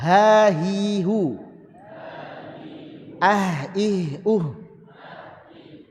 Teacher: Jadi H itu ya dari mana? Dari tenggorokan.